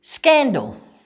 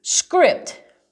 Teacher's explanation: sc sounds like an sk so there's your k sound it's a hard k next to the s